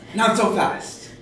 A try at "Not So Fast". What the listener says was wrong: Now, see, now you sounded like you were scolding a child for running. You were like, not so fast. You've got a weird way of inflecting on this